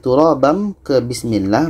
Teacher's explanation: tanwin bertemu ba hukumnya iqlab bunyi tanwin ini kita ubah kepada bunyi mim karena itu di sini ada tanda ikqlab ada mim Jadi kalau